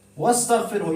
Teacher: واو direct سین کے ساتھ باندھا جاتا ہے لہذا ہم اس الف کو گرائیں گے، اس حمزہ کو ہم گرائیں گے۔